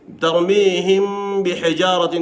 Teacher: کله چې میم ساکن نه بس با راشي نو دلته اخفا کېږي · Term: اخفای شفوي